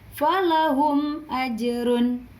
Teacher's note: bertemu dengan salah satu huruf hijaiyah selain mim dan ba Hai bunyi mim tersebut dibaca jelas atau terang pada bibir dengan mulut tertutup tanpa disertai samar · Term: Izhar Syafawi